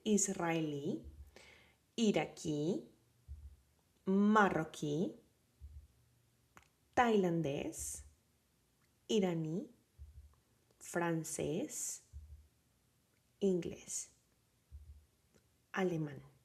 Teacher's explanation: these are the words that have the stress on the last syllable